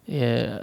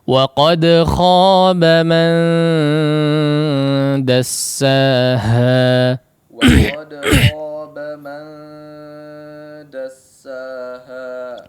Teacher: Nah, kalau masih ingat ya, awsat yaitu kurang lebih samar atau kesamarannya setengah ya. Ada suara yang digunnahkan kepada hidung ya, ada juga masih suara yang lewat jauf ya. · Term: ikhfa